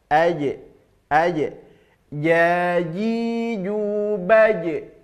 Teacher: makhraj huruf Jim adalah tengah lidah ditempelkan ke tengah langit-langit atas